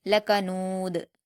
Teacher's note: تنوین ہے تو وقف کرتے ہوئے جزم دے دیں گے اور دال پر جزم جب ہوتا ہے تو اس کو قلقلہ کے ساتھ پڑھا جائے گا